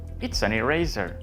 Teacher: pegas la S del verbo to be con la A y luego la N con eraser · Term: conexión